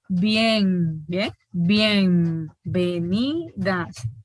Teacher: Entonces, ¿cómo se articulan los sonidos? No pronunciamos una N así, nasal, alveolar, sonora, sino que la pronunciamos bilabial. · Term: alófono nasal bilabial sonoro